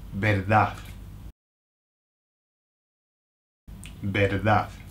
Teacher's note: The Spanish don't pronounce the last D. Either they'll say verdad with a verdad, or they'll say nothing, like they'll leave it hanging, like verdad.